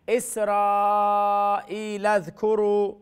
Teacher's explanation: اسرا مد واجب متصل، را کو لمبا کریں